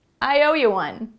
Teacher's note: When we're speaking quickly, we don't usually say you, we say ya.